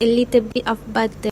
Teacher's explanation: the t in little is fully pronounced and the vowels may shift due to Malay phonological influence.